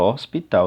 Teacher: na palavra hospital se você perceber bem o h ele não é pronunciado